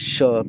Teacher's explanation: तालव्य स तालू से निकलता है तालव्य मतलब तालू से निकलता है यह है मुर्धन्य स मतलब